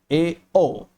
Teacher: संवृत से थोड़ा अधिक मुख खुलता है इन्हें बोलने में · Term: अर्ध संवृत स्वर